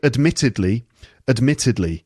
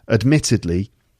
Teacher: Okay, admittedly, 4 syllables. It's the second syllable.